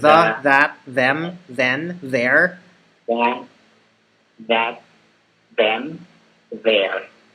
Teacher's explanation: your tongue and the back of your front teeth slightly vibrates as you make the sound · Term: th sound